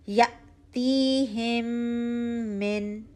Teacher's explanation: फिर मिन नाक में आवाज जाए वन काउंट · جھٹکا اچھا سا ہو، تی 2 کاؤنٹ اچھا اسٹریچ ہو رہا ہو، ہم غنہ اچھا سا 2 کاؤنٹ ہو، پھر من ناک میں آواز جائے 1 کاؤنٹ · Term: गुना